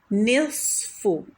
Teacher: نون کو ترقیق سے پڑھیں گے لائٹ باریک، اور صوت کو تفخیم یعنی ہیوی پڑھیں گے